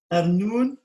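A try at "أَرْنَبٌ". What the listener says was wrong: Ah non, là, le point, il est en bas. Il est passé en bas, donc c'est une autre lettre. C'est le bas.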